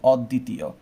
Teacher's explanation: আর যেহেতু মাঝখানে আছে তাই যেই বর্ণের সাথে আছে সেই বর্ণটা দ্বিত করতে হবে। দয়ার সাথে থাকার কারণে এই দকে দ্বিত করতে হবে, 2 বার উচ্চারণ করতে হবে